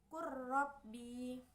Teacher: Contoh bacaan pada idhom mutaqaribain ini yaitu ketika lam sukun bertemu dengan ro berharokat, sehingga cara membacanya yaitu dengan memasukkan huruf lam sukun ini langsung pada bacaan ro berharokat, sehingga bacaan lam sukun ini tidak dibaca lagi, sehingga langsung saja membacanya seperti huruf ro yang ditasdidkan.